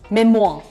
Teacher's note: र की साउंड नहीं आ रही इसमें. Memoir. और अमेरिकन प्रोनाउंसिएशन में there's a hint of rolled R towards the end, so memoir.